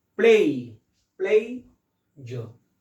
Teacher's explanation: और मैं एक बात आपको बता दूं कि यहाँ पर यह स्ट्रांग है और झ कम स्ट्रांग है, इसलिए प्ले के ऊपर हम यहाँ पर स्ट्रेस देंगे